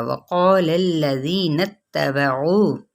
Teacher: वक़ौल अल्लज़ीना, मद इसलिए बिल अलिफ भी है और कौफ हरूफ मुसालिया में से है, अलिफ अब कौफ के ताबे हो जाएगा तो अलिफ भी पुर पड़ा जाएगा।